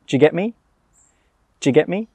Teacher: We don't say 'do you'. We say 'djyuh'.